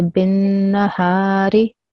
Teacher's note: just make sure that you don't prolong the noon because it only has a fatha, and fatha sound is only 1 second long